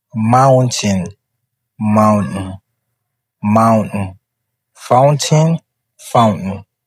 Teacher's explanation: T omitted when precedes by N, which means the T will not be pronounced. If you see N plus T in one word, that T will not be pronounced. Of course, when it's also followed by a vowel.